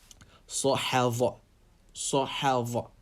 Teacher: Make sure you're not pronouncing Dha as Z. Make sure it's being pronounced with your tongue between the teeth.